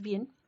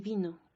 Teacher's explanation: bien, que tiene una B oclusiva, y vino, que tiene una B fricativa